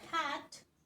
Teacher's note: in the word hat we have uh the tongue in a low area of the mouth